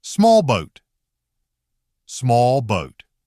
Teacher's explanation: L is followed right away by the lip sound /buh/. So instead of standing out as a fully separate sound, the L often becomes weaker and faster.